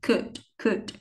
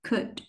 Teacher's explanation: Nó không có rõ âm u, không chu môi nha mọi người. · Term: âm u ngắn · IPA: /ʊ/